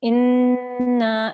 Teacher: you need to hold on that noon for 2 seconds, make a 2-second nasal sound